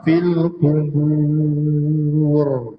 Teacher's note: kita baca dengan nipis kerana ba bertemu wau dalam keadaan muncung sahaja.